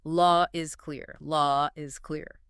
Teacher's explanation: Because law ends in an open vowel, British speakers will often bridge it to is with an invisible R.